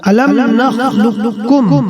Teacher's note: الم نخلقکم میں قاف مدغم ہے اور کاف مدغم فیہ، یہاں بھی ادغام متقاربین ہوگا